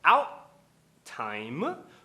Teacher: dando aquele corte na garganta do T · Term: parada glotal